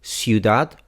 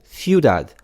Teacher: ciudad with an S sound or ciudad with a th sound